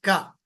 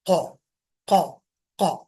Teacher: पतले लेटर के लिए क थोड़ा फैला के का मोटे के लिए क क क थोड़ा गोल करके पढ़ेंगे